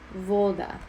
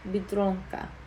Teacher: putting the emphasis on the second to last syllable, which happens to be the first one in this case.